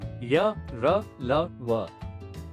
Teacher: इनके उच्चारण में जीभ मुंह के किसी भाग को पूरी तरह नहीं छूती और प्राणवायु भी कम समय रुकती है, अतः ये अर्ध स्वर जैसे लगते हैं। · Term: अंतःस्थ व्यंजन